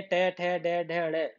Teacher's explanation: मूर्धा से बोले जाएंगे, मूर्धा